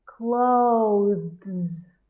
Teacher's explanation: stick your tongue out to make your sound and then go to your Z at the end clothes bears bears craves craves make sure you go from your